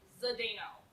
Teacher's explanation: most english speakers pronounce that zadino and put in an extra vowel sound in here because we don't have a zd combination